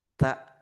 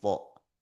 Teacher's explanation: Bedanya kalau ta lidah lurus, kalau to lidah naik.